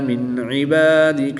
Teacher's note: نون ساکن کے بعد عین حروف حلقی میں سے ہے تو یہاں پر اظہار ہوگا، یعنی نون ساکن کو خوب ظاہر کر کے پڑھیں گے، غنہ نہیں کریں گے۔